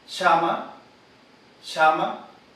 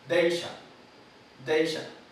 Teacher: Ejemplos también entonces de la sibilante posalveolar sorda.